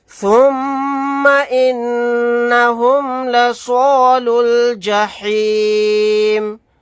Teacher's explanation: میم مشدد ہے، یہاں پر غنہ کریں گے، نون مشدد ہے تو یہاں پر بھی غنہ کریں گے